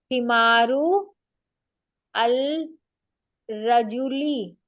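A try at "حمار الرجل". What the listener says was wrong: अल को अलग नहीं पढ़ना है, इन दोनों को मिला के पढ़ना है, मुरक्कब बना रहे हैं ना।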